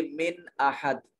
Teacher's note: نون ساکن کے بعد حمزہ حروف اظہار میں سے ہے، نون کو ظاہر کر کے پڑھیں گے